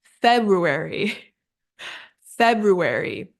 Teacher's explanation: there's that slight R sound in the second syllable and our stress is on the first syllable February then we